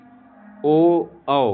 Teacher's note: यह कंठ और ओष्ठ की सहायता से बोले जाते हैं। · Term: कंठोष्ठ